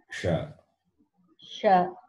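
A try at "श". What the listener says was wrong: But I'm hearing the palatal sound. You have to be corrected.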